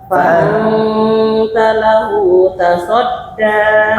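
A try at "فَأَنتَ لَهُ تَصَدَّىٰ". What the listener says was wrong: Asodnya tebal. Tasadda. Fa'anta lahu tasadda.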